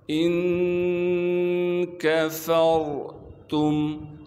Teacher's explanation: حمزہ کو نون ساکن سے ملائیں گے اخفا یعنی غنے کے ساتھ